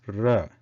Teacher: when we try to touch the tip of the tongue to the hard top part of the mouth, that is murdha, then the sound ra is produced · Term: refa